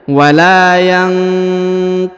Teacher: Huruf nun sukun bertemu dengan qaf ya, maka didengungkannya.